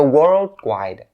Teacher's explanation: it's best for you to turn this first d sound into a stop d sound